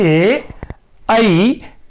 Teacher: एदैतो कंठ तालुः, कंठ एवं तालु अर्थात ए ऐ का उच्चारण स्थान कंठ और तालु होता है और इसे हम कंठ तालव्य वर्ण भी कहते हैं।